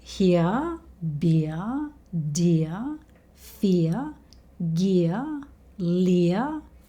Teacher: All these words have the same ending sound. They all end with the schwa sound.